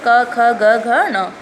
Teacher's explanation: वायु कुछ क्षण के लिए रुककर झटके से निकलती है, स्पर्श व्यंजन कहलाते हैं।